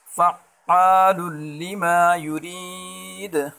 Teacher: دال حروف قلقلہ میں سے ہے، وقفاً میں دال کے اوپر جزم آ جائے گی تو یہاں قلقلہ کریں گے